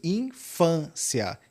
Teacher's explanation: A palavra infância, perceba que o peso infância está no fã. Por isso, nós dizemos que ela é paroxítona, porque a última sílaba é cia e o fã, que é a penúltima, é a paroxítona.